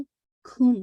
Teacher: लखुम, काफ की दम्मा वाजे की, कुम नहीं है, लखुम, काफ की दम्मा को वाजे करके फिर मीम को मर्ज कीजिए